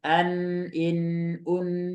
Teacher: Nun bertasdid ya Nun dan mim itu sama-sama punya sifat e punya makhraj gunah dari hidung